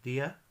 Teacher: D is actually not like a death like in English it's kind of softer you it's kind of like a th sound as well